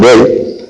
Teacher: hay una E, que sí que es una vocal media, ni abierta ni cerrada, y es una vocal anterior, porque la lengua se proyecta hacia adelante